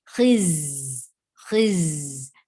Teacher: For kasra, give e sound, and there should be Safir on za. Za, there should be a buzzing sound in za. Khiz. There shouldn't be any mixture of sin and za. · There shouldn't be any mixture of sin and za. It is clear Z sound.